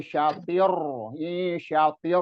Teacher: tanpa gunnah, tanpa dengung. Jadi nggak boleh, nggak bisa didengungin. Jadi makanya di sini nggak boleh lama-lama kalau ro sama lam itu. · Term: idgham bila gunnah